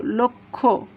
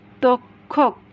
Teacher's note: কয়ে মূর্ধন্য ষ যদি শব্দের শেষে কিংবা মাঝে থাকে তাহলে ক খয়ের মতো উচ্চারণ হয়। তাহলে দেখো লয়কার লো আর ক লোক, ক্ষয়কার খো লক্ষ্য।